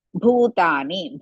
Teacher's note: ಭೂ ಇಸ್ ಮಹಾಪ್ರಾಣ ಅಂಡ್ ದೀರ್ಘ